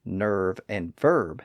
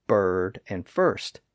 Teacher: thanks to the centralizing pull of that R sound all of those vowel sounds merged together